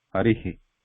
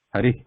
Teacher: Visarga is not a swara, it is just a separate sound, breath sound. But And it takes the swara, the sound of the swara when you pronounce it.